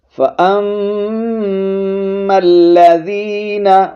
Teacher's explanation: میم پر شد ہے، غنہ کریں گے، میم کو لام کے ساتھ ملائیں گے ، میم لام زبر مل، لام زبر لا، فَأَمَّا الَّذِينَ آمَنُوا